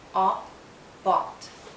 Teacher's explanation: It's a short sound and a very open and rounded sound. Make your lips rounded and lower your jaw, aw, aw, aw.